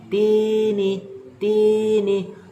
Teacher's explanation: cara bacanya dipanjangkan dua harokat diayun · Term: Mad Thobi'i